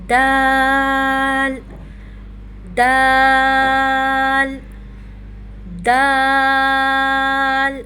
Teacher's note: ہونٹوں کو اوپر نیچے کی طرف کھولتے ہوئے جتنا منہ کھول کر پڑھیں گے اتنا اچھے سے دال کی ادائیگی ہوگی. تا کی طرح دال کو پڑھتے ہوئے بھی ہماری زبان کی نوک ہمارے اوپر کے دانتوں کی جڑ سے ٹچ کرے گی